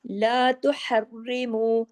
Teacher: تشدید کی وجہ سے سختی سے ڈبل را ہونا چاہیے لیکن ہیوی نہیں ہونا چاہیے کیونکہ را کے نیچے زیر ہے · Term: را باریک